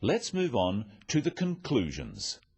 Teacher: So says, let's move on to the conclusions. Stressing conclusions because it's the key word in this sentence.